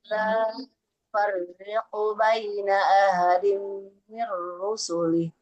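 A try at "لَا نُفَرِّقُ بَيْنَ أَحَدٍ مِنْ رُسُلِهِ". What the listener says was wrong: Boleh diulang huruf H-nya. Ahadim. Coba Ibu.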